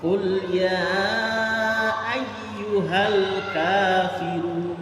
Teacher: Jadi kafiru, ru, jangan run, tapi ru, tebal.